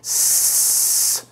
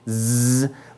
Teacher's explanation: if I say s, my vocal cords are silent. They don't vibrate. But when I say z, my vocal cords vibrate, but they're both alveolar letters. · the sigma and the zeta, or the S and the Z, are both alveolar letters. The only difference is our vocal cords vibrate with one and don't vibrate with the other. So if I say s, my vocal cords are silent.